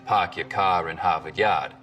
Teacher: Typical Boston accents, of course, are non-rhotic, meaning no R sounds in park your car in Harvard Yard.